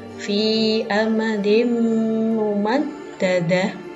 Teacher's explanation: Idgham bihunnah adalah apabila ada nun sukun atau tanwin bertemu dengan salah satu huruf ya, nun, mim, atau waw. Maka cara membacanya dengan mendengung 2 harokat atau 2 ketukan.